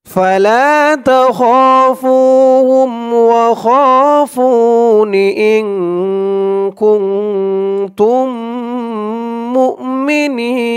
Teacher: তাসদীদওয়ালা মিম আসছে মিম সাকিনে ঈদগাম গুন্না হবে ইন কুনতুম মুমিনিন ওয়াকফ করার কারণে জেরের পরে ইয়া সাকিন এক আলিফ টানটা তিন আলিফ টান হয়ে গেছে